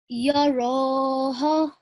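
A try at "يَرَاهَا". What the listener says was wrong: Just make, so this ha, this alif, which follows the ha, is alif madda. So this is going to be 2 seconds, and this vertical fatha is also going to be 2 seconds. So make the timing on both of them equal.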